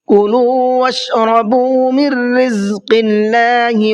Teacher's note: واشربوا کا با بھی کھینچے گا اس لیے کہ یہاں پر واو ساکن سے پہلے پیش ہے